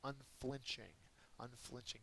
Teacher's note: unflinching has the second syllable accented